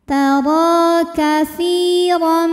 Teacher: Kemudian ada hukum mad tobi'i zahiri sebab ada ya sukun yang sebelumnya berharokat kasroh, maka sa panjang 2 harokat